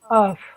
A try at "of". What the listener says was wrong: Remember, OF is always ob. This is off.